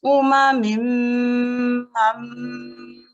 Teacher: So the sound, we're not making the sound just yet, it's just a nasalization. Uma mim, we prolong the nasalization. After that, you can see there's this meme mushaddad carries a fatha.